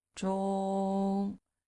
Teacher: 中, okay, is high flat. 中, we call it the first tone.